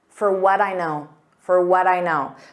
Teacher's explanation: So for becomes an unstressed fur. We don't pronounce that D on what, so it sounds like a soft D, but then you add that D to the next sound, which is I, the subject I, but it's the same pronunciation as I.